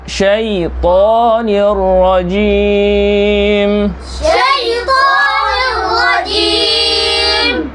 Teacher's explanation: শিন বলতে হলে মুখ ভর্তি বাতাস বের হবে, ত কোনো বাতাস বের হবে না।